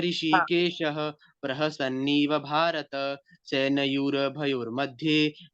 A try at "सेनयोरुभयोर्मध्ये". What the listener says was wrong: योरु सेनयोरु, रू है, र नहीं।